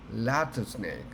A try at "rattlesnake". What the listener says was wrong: I think there's a difference between the pronunciation of L and an R, and I do believe that it's hard for you to do that. Okay, so R. Can you pronounce? Pronounce the sound of R? Rattlesnake.